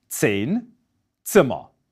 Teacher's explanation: Affricate sounds are actually 2 sound segments that are articulated at the same time. So the t sound in 10 really is a t and a s pronounced at the same time.